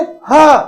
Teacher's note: किंतु जैसे हम बोलेंगे ह, अब ह का तो उच्चारण स्थान ही कंठ काकल है, तो वहां पर प्रेशर बहुत ज्यादा है, वहां पर कंपन या तीव्रता जो है वो बहुत तेज है, इसलिए ह ध्वनि जो है वो घोषत्व को ग्रहण करती है। उसमें कंपन की मात्रा इन सब से बहुत अधिक होती है।